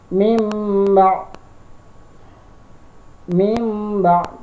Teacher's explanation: salah satu contoh bacaan XX1 dan cara membacanya adalah for Hai karena huruf n-nya harus dirubah bunyinya menjadi m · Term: iqlab